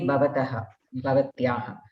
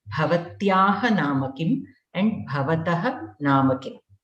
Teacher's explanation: many people have tough time remembering to use the Mahaprana Bha in Bhavataha and Bhavatyaha. They say Bhavataha, Bhavatyaha.